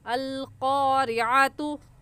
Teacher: और आइन की जगह हमज़ा नहीं पढ़ेंगे, बल्कि ये आइन है और आइन हलक के दरमियान से निकाल कर पढ़ा जाता है। तो इसे अल क़ारिअतु नहीं कहेंगे, बल्कि आइन निकाल कर पढ़ेंगे।